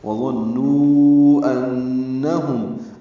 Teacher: نون مشدد پہ غنہ ہوگا اور نو میں مد منفصل ہے، وظنوا انہم، ان میں نون مشدد پہ غنہ ہے ، ہم میں میم ساکن کے بعد میم آنے کی وجہ